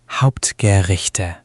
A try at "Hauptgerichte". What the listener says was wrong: Good attempt. Just watch the che in Gerichte. It's that soft sound in the back of your throat, almost like a gentle hiss. Gerichte. Not Rick, but more like Richte.